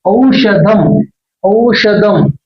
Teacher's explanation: దాకు సున్నా పెడితే దం, ఔషధం ఔషధం. చూడండి ఈ షా చదివేటప్పుడు షా ఈ మూర్ధన్యం వైపు గాలి నెట్టబడాలి, అంగుడి వైపు